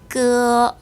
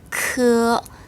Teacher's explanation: 첫 번째 성모는 끄 여기서 바람을 입 밖으로 3개 내보내면 크 발음이 됩니다.